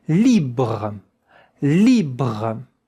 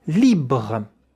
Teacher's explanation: Encore une fois, le E à la fin ne se prononce pas. Once again, the E at the end is not pronounced.